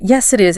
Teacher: You can literally feel how the tone drops and settles on the word is.